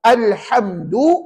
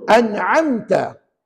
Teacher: Jadi tuan-tuan tidak boleh bunyi sengau. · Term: izhar syafawi